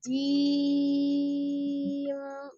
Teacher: Jimnya baru dia lebih kuat, jimnya siddah